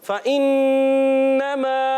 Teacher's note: फ़इन्नमा, फ़ा को ज़बर है, फ़ा के ऊपर ज़बर आने की वजह से इसको खींचना नहीं है। फ़इन्नमा हमज़ा खूब वाज़े करेंगे।